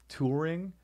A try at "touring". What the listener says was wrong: Touring? I think you were removing the U.